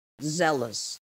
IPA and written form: ˈzeləs (zealous)